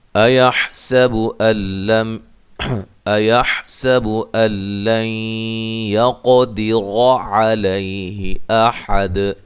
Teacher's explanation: حمزہ کو تحقیق سے، سین کو باریک سیٹی سے، ہا کو اس کے مخرج سے نکالنا ہے۔ اللَّن، یہاں نون ساکن کا ادغام ہے لیکن بلا غنہ ہے، غنہ نہیں کریں گے۔